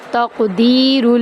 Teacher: تا کو قاف کے اندر داخل کرتے ہوئے کاف کو تھوڑا سا پر کریں گے اور کاف کو ہلائیں گے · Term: قلقلہ